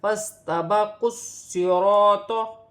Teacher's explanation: سین ساکن ہے، سین کو فا کے ساتھ ملا کر پڑھا جائے گا، فَاسْتَبَقُوا الصِّرَاطَ، قاف کو صاد کے ساتھ ملا کر پڑھا جائے گا، صاد مشدد ہے، صاد موٹا اور سیٹی والا حرف ہے